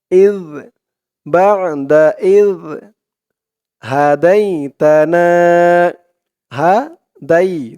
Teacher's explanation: জিহ্বার মাথা উপরের দাঁতের মাথার সাথে লাগবে দালের উচ্চারণটা করার সময়